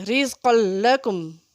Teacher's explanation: رزق لکم پڑھیں گے بغیر غنہ کے